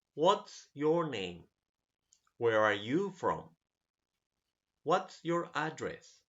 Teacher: All of them have a decreasing intonation. The arrow goes down.